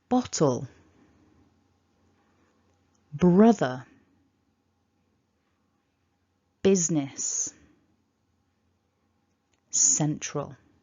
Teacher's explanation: with all of those words we want that first syllable to just be a little bit stronger